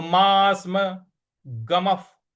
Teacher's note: मा के बाद जो आधा स है इस पर आघात देना है